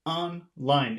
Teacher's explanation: It seems like both syllables are accented.